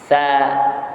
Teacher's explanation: Jadi huruf dia keluar daripada hujung lidah bertemu dengan gigi kacip sebelah atas. Jadi bunyinya lembut.